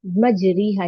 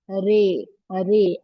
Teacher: इस तरह पढ़ना कि तलफ्फुज याए मजहूल की तरह हो जाए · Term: इमाला